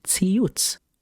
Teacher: However, the closest sound to the letter Tsadi in English is actually the syllable TS. It's like saying the T and the S back to back.